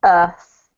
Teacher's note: with the british accent we don't pronounce the r like americans do um we leave it out unless it's connecting to another word